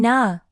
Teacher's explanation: Your tongue touches the ridge behind your upper teeth.